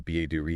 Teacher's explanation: the ba-do-re sound, that T-flapping as you called it, it's super common in American English. Basically, when a T is between two vowel sounds and the first vowel is stressed, it often softens to that quick dead sound.